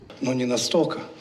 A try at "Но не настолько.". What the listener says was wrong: Но не настолько. Here I have some questions to his pronunciation, because he lost the soft l.